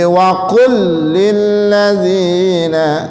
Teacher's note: Ini namanya idgham mithlain. Jadi suara lam yang pertama masuk ke suara lam yang kedua. Jadi wa qul lil ladzina.